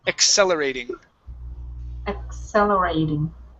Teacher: So in a lot of cases, you guys, when we have a double C, the first C is a K sound, ek. The second C is an S sound, so. Accelerating.